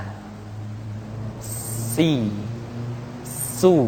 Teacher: ada suara tambahan yang menyerupai dengan suara belalang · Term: sifat sopir